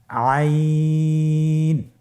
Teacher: হরফটি কন্ঠনালীর মধ্যখান থেকে উচ্চারিত হয়।